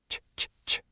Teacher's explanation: start by touching your tongue to the roof of your mouth like you're going to make a T sound, and then immediately slide into that sh sound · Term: ch sound